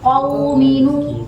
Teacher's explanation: Fathah itu ada juga sudah tebal tapi fathahnya kurang terbuka. Jadi bedanya kalau sama fathah untuk huruf qaf itu dia dibuka lagi rahangnya